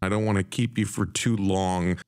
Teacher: the words are slightly stretched out longer and used with emphasis do you hear how the music or the intonation falls through the statement